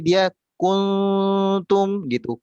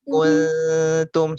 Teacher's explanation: Kalau huruf ta itu Bunda ketika diikhfakan, meskipun dia berharokat dhammah, itu ditipiskan dulu. Jadi bibir kita itu kembali ke posisi semulanya.